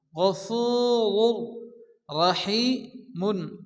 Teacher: এই রাকে একটু মোটা করে পুর করে উচ্চ করে পড়তে হবে